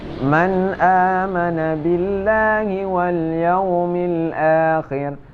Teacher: maka hukum membacanya adalah idhar, yang artinya tiada berdengung, kita baca dengan nyata